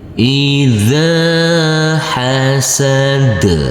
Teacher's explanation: huruf zal yang berfathah a bertemu dengan huruf alif yang tidak berharokat, maka huruf zal kita baca dengan panjang 2 harokat. Hasad, huruf dal yaitu huruf yang terakhir, karena kita berhenti di sini, kita wakaf di sini, maka huruf yang terakhir harus kita sukunkan.